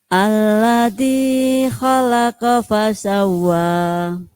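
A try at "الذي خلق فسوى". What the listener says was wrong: Kepanjangan kedi. Alladzi khalaqa fasawwa. Karena tasydidnya wawu.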